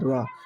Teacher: जिस व्यंजनों के उच्चारण के समय जीभ की नोक वायु से रगड़कर कंपित है उसे लुंठित व्यंजन कहते हैं। लुंठित व्यंजन रा होता है।